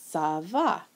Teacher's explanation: this accent makes the C from a hard K sound to a soft S sound, like in the expression ça va.